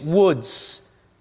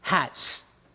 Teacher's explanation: woods voiced hats voiceless